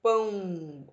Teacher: ele também pode ser nazar aquele som que também ele sai pelo nariz